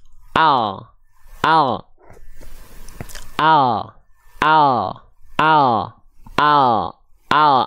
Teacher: Nah, kalau teman-teman melafalkan L alfabetnya hanya menyentuhkan bagian ujung akhir lidah sini, ujungnya banget, ujung akhir lidahnya banget ke langit-langit di atasnya sini